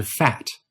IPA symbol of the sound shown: æ